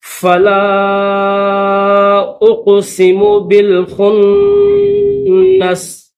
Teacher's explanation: سین کے نیچے زیر ہے، لیکن جب اسٹاپ کریں گے، وقف کریں گے تو پھر اس سین کو جزم پڑھیں گے۔